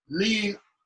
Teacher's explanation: Lee, L-I-G is Lee. So you don't say the G, it's palatalized the Y kind of sound